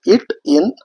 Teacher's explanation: நாவின் நுனி அன்னத்தின் நுனியை பொருந்துவதால் பிறக்கும் எழுத்துக்கள் இட் இன்